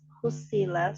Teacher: sodnya itu bertasdid sehingga dibaca tebal, ditekan